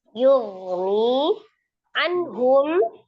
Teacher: huruf ha juga salah satu huruf yang keluar dari alhalqi atau tenggorokan tepatnya tenggorokan bagian bawah sama dengan hamzah ya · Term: izhar halqi